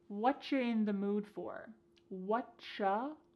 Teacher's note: Here the word you has been reduced to cha.